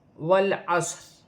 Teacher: صاد بھی ساکن ہے، موٹا پڑھا جائے گا سیٹی کے ساتھ۔ صاد کو عین کے ساتھ ملایا جائے گا۔ · را کے نیچے زیر ہے، را باریک پڑھی جائے گی